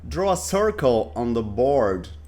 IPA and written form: drɔː ə ˈsɜːrkəl ɒn ðə bɔːrd (Draw a circle on the board)